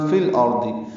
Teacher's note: لام ساکن پہ اظہار قمری